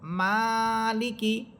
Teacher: এখানে প্রথম শব্দটা দেখেন মিম খারাজবর মা লামসের লি মালি কাফসের কি মালিকি। এখানে মিম হরফে আপনাকে টেনে পড়তে হবে। এখানে লাম বা কাফ হরফে কোন টান হবে না।